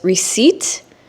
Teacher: Receipt is spelled funny because the last two letters, the P and T, are two consonants that aren't usually put together. But when a native English speaker says receipt, the P is silent or it's omitted, which means it's removed.